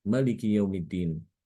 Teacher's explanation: pada kata Maliki Yaumiddin Imam Ibnu Katsir dibaca pendek. Mimnya dibaca pendek.